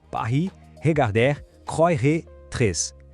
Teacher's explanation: Repara como o som é consistente, sempre vindo da garganta. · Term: R gutural